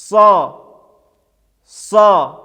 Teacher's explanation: звук сад является твердым, эмфатическим, произносится с напряжением органов артикуляции и с поднятием задней части спинки языка.